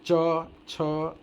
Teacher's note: ये जीभ जाता है, तालु में मारता है, प्लेट में मारता है और आवाज़ बाहर आती है